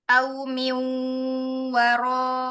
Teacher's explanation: nun sukun ketemu wawunya mau ditahan